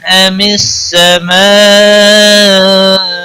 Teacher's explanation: میم ساکن کے بعد الف آیا ہے، اس لیے یہاں پر اظہار شفوی ہوگا